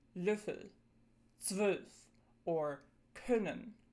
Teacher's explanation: Then there's the short, lax version, Ö, as in Löffel, 12, or können.